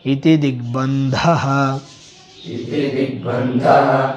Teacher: ಬ ಅಲ್ಪಪ್ರಾಣ ಧ ಮಹಾಪ್ರಾಣ